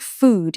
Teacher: It's that classic rounded ooh that sounds almost regal.